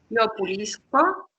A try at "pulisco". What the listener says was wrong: Bien.